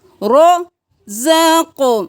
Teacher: را موٹا، زا کو سختی سے